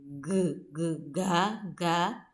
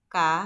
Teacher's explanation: Jadi kalau ngomong K dengan ngomong G, ga, maka akan lebih terasa G, G itu getarannya lebih terasa dibandingkan K